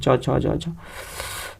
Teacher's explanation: च वर्ग है, वो तालु से बोले जाते हैं